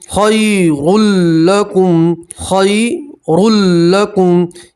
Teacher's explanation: तसूमू खैरुल लकुम खैरुल लकुम, ये जो या नज़र आ रही है इसको आप खींचेंगे नहीं, या लीन है, या लीन को खींचते नहीं है, या लीन को जल्दी से और नरमी से पढ़ते हैं